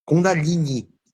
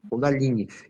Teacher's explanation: é Kundalini, com o acento no i